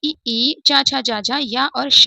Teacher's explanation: इ ई, च, छ, ज, झ, य और श हम हमारे तालव्य से उच्चारित होने वाले अक्षर हैं।